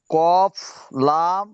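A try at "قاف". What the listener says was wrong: টান দিয়ে বলতে হবে, আরিফটা এ পর্যন্ত যেমন টান দিয়ে পড়েছিলেন সেরকম টান দিয়ে পড়তে হবে। কফ।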